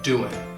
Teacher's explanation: Almost always, the G in doing will get dropped.